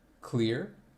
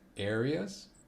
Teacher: the last category for Glide vowels is towards uh which is the schwa sound